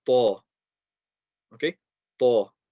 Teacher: Now, it's a heavy letter. That means we're going to put pressure on the makhraj, raise the back end of the tongue, slowly release, round the mouth.